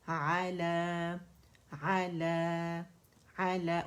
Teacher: اوپر آواز جائے گی، لا کے لیے آواز اوپر جائے گی. ٹھیک ہے، سائڈ وے اسٹریچ نہیں کریں، علیہ کر کے نہیں پڑھیں گے، امالہ ہو جائے گا، اور وہ امالہ نہیں کر سکتے ہم.